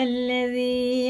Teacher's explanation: یا ساکن سے پہلے زیر ہے، یہ بھی کھڑے زیر کی طرح کھینچ کے پڑھنا ہے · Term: مد